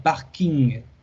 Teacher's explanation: no es un sonido nasal, por lo tanto, aquí se pronuncia parking, hasta la G